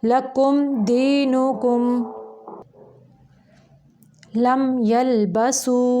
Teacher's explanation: लंबा नहीं करेंगे, सिर्फ ज़ाहिर करेंगे मीम को। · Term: इज़हार शफ़वी